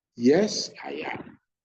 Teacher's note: The yes is louder, I am low pitch.